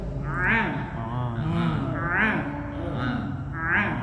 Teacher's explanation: Pangkal lidah naik menyentuh langit-langit kemudian turun.